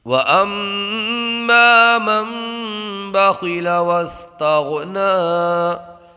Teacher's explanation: نون ساکن کو میم سے بدل کر اقلاب کر کے پڑھیں گے